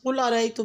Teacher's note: قل ارائیتم میں قاف کو پر پڑھیں اور را پہ جب زبر آئے تو را کو پر یعنی کہ موٹا پڑھا جاتا ہے